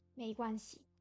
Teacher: Il n'y a pas de ton sur le si.